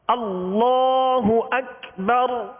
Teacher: اسم جلالت اللہ عز و جل کے لام کو پر یعنی موٹا کریں گے